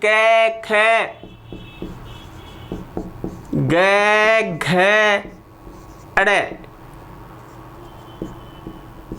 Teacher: क वर्ग का उच्चारण स्थान है कंठ